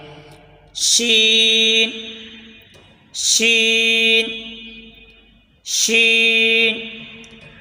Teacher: زبان کے درمیان اور اوپر کے تالو کے درمیان سے ادا ہوتا ہے۔ اس کا مخرج اور جیم کا مخرج ایک ہی ہے، یعنی زبان کے درمیان اور اوپر کے تالو کے درمیان سے ادا ہوتا ہے۔